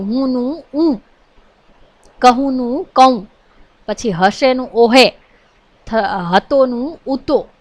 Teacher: હ શ્રુતિ અહીં બહુ ઓછો બોલાય છે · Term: હ શ્રુતિનો અભાવ